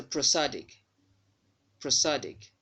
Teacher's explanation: The vowel sound there in the first syllable of this word is a schwa sound.